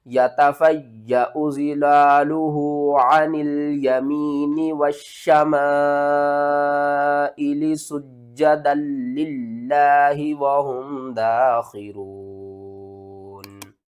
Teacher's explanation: اور اس کے بعد لفظ اللہ سے پہلے زیر ہے، لفظ اللہ کو ہم نے باریک کر کے پڑھنا ہے۔